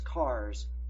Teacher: So, cars, your S will be pronounced like a Z. It is voiced. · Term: Z sound